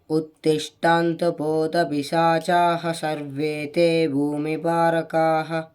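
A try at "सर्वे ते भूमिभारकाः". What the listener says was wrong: మధ్యలో గ్యాప్ లేకుండా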